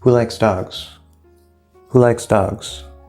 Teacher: All three stressed. Dogs is going to be the highest.